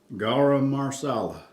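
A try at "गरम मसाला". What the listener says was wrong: No, there's no R in there. the second word, garam masala.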